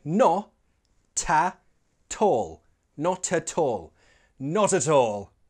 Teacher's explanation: Notice the catenation in not at all. It sounds more like no, ta, tall, not at all, not at all, thanks, not at all.